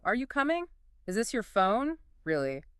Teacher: My voice goes up into the treble keys at the very end. · Your pitch scoops up at the end of the sentence. Like you're tossing the words up into the air for someone else to catch? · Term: rising intonation